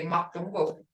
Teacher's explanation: But when we're speaking, we say makdungo. It means the same thing, but we just cut off that magi.